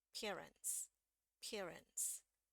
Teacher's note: tidak dibaca ya Jadi ini sebenarnya silent ya tidak dibaca Em Jadi R langsung masuk ke n